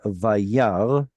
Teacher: The aleph has no vowel attached to it. It has quiesced. It is not pronounced at all. It has gone completely silent.